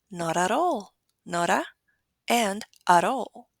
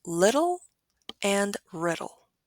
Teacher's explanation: It is a quick flap of the tongue against the tooth ridge with your vocal cords vibrating. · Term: alveolar flap